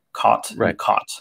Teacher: So for instance, there are certain vowel sounds that I pronounce differently than my parents. For me, the word C-O-T and the word C-A-U-G-H-T are pronounced identically.